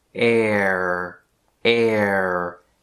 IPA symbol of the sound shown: ɛr